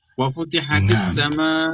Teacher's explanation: السماء هنا لازم خمس حركات